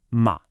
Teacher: And the fourth tone is a sharp quick fall like you're giving a command.